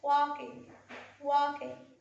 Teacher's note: in the word walking, we have L, which is silent